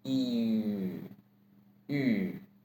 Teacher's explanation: To say it, we say e with u mouth shape. E, yu. Third tone with hoarse voice again.